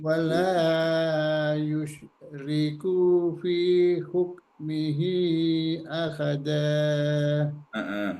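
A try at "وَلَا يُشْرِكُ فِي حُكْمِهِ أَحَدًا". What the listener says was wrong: Kunya pendek Pak Haji. Wala yusyriku, kunya pendek.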